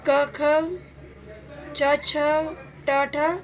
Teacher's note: जिनके ध्वनि उच्चारण में जो हमारी स्वर यंत्रिका होती है उसमें किसी भी प्रकार का कंपन नहीं होता, और इसमें प्रत्येक वर्ग का पहला और दूसरा वर्ण आता है। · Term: अघोष वर्ण